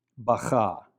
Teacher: the hey at the end of the word is not pronounced at all.